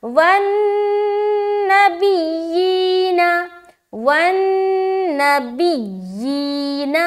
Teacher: लेकिन तशदीद जब या के ऊपर आए तो ज़्यादा सख्त बनेगी आवाज़